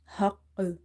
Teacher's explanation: you have to bounce this qaf because of qalqala